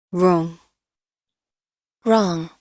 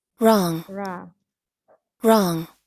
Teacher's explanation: O-nya ini yang British dia pendek ya, sedangkan yang di American dia panjang gitu.